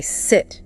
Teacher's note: Now try the short E and say sit. Feel how different that is. Shorter, more relaxed.